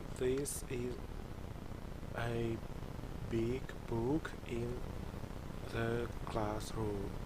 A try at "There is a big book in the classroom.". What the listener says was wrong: The first time you said theys. Theys. That was the pronunciation the first time. There's. There is a big book in the classroom.